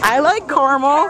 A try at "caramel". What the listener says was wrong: Caramel. It's not caramel. There's an extra A in there.